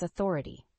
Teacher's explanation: the word Authority has four syllables with the stress on the second syllable